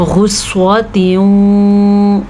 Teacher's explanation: غین کو پر پڑھنا ہے، صاد کو پر پڑھنا ہے اور پھر یہاں پہ غنہ ادا کرنا ہے